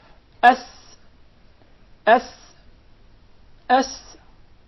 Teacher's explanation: Did you notice the whistle while pronouncing the letter Sin?